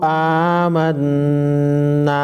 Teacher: نون مشدد کو غنہ کریں گے